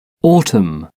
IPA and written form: ˈɔːtəm (autumn)